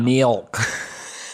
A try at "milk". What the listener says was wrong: Are you pronouncing it M-E-L-K?